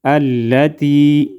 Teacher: التي حمزہ لام زبر لام زبر لا، تا یا زیر تی، التي یا مدہ ایک الف کے برابر کھینچ کر پڑھیں گے. التي تطلع، تا تو زبر تا، تو زبر تو، لام زیر لے، عین پیش عو، تطلع، تو کو ہم موڑ ادا کریں گے.